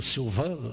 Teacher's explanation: Em Roma, ele está vendo agora no 7º andar aqui um congresso, né, em que acabou de falar, eu ouvi sobre Vieira, eu acabei de vir de lá, ouvi o Silvano, porque eles não nasalizam. O N pertence à sílaba seguinte, não nasaliza a vogal anterior